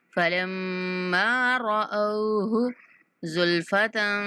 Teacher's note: رَأَوْهُ یہاں واو لین ہے تو رَأَوْهُ اوہ کی آواز آنی چاہیے